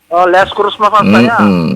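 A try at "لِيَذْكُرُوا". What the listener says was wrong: Jangan dikuru kepanjangan ya, langsung kurus ya.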